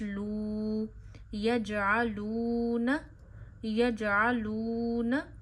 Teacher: واو ساکن سے پیچھے پیش ہو، واو خود ساکن ہے اور واو سے پیچھے گول پیش ہے تو واو کو مدہ کرتے ہیں، یعنی کھینچتے ہیں ایک انگلی جتنا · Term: واو مدہ